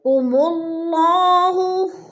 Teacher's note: ینہا، ین پہ اظہار ہو رہا ہے، نون ساکن کے بعد حروف حلقی میں سے حمزہ آ گیا ہے تو ادھر اظہار۔ قم اللہ، اللہ کو پر کر کے پڑھیں گے، اس لیے کہ اللہ سے پہلے لفظ میم کے اوپر پیش ہے تو اللہ پر پڑھا جائے گا۔